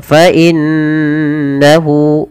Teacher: Kemudian fa innahu ada bacaan gunnah pada lafal nun yang berharakat tasydid. Maka apabila ada nun berharakat tasydid kita baca dengan bacaan gunnah. Cara membacanya yaitu menahan suara nunnya. Fa innahu baru dilepas.